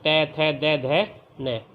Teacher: तो ये जो दांत है, जो दांत की जड़ होती है वहाँ से बोले जाते हैं। जो वायु है, जो हवा निकलती है, वो दांतों का स्पर्श करती है, इसलिए ये दंत्य कहलाएंगे।